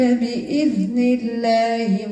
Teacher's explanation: اللام مرققة لأن مسبوقة بكسر